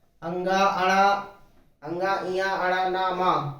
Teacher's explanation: पंचमाक्षर, इनका उच्चारण होता है नासिका से और इनको कहते हैं नासिक्य